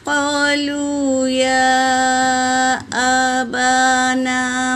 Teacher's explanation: یا پر مد ہے، مد منفصل، اسے 3 سے 4 الف کے مقدار کھینچیں گے۔ با اور نا دونوں الف مدہ ہے تو 1 الف کے مقدار کھینچیں گے، اور یہ ما بھی الف مدہ ہے، اسے بھی 1 الف کے مقدار کھینچیں گے۔